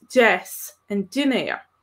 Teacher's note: a slender d tends to sound something like halfway between a d and a j sound so it's not the g sound in english but it's kind